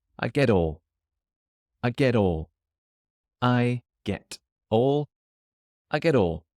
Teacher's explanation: the letter T at the end of get changes to a D when it joins the next word